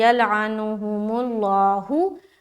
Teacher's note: मीम जैसे लाम से मिलेगा, ये लाम मोटा पढ़ेंगे